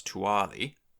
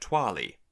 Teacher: So first the h drops out to give us tuali, and then the unstressed u turns into a w, so we get twali. So depending on whether or not you want to count the glide as a vowel or a consonant, we do kind of have initial clusters with glides only.